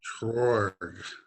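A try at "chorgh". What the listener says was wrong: Chor. But and then the other thing is you're saying chorg. It's not a G. It's a purring sound.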